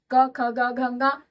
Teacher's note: एक तो क वर्ग हो गया जो कंठ से बोला जाता है, क ख ग घ ङ।